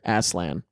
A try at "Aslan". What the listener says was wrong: Oh, don't pronounce it like that. Aslan. He said Asland.